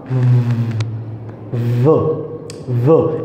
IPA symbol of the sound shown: v